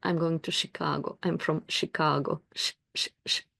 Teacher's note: sound and um most of my students come from Midwest and they pronounce the name of the city Chicago with a perfect sh sound